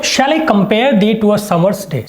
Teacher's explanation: जो short long short long short long short long, line of 10 syllables with a pattern of short long short long short long short long, unstressed stressed unstressed stressed